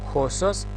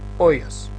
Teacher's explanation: кога имаме аспер, читаме Х, хосос, а кога имаме ленис, не читаме здив, читаме ојос. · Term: спиритус аспер